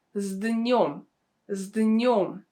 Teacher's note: the consonant S in this situation is pronounced as Z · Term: sound voiced